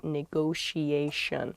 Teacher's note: there are two T's in this, but neither T is a hard T. They're both very soft, that sh sound, because they're followed by the I and another vowel, the she, a negotiation.